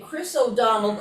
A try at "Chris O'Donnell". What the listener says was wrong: Chris O'Donnell. You're saying it with a D in the end. It's not got a D at the end.